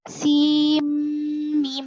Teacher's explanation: نون کو میم سے بدل کر پڑھیں گے. سیم میم بولیں گے, یہاں پر سین کا نون نہیں پڑھیں گے, ٹھیک ہے. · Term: ادغام